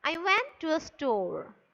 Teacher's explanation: towards the end the voice is falling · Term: falling intonation